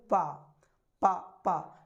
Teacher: जब हम पा का उच्चारण करते हैं तो पहले हमारे होंठ दोनों मिलते हैं, फिर उसके बाद उसका उच्चारण होता है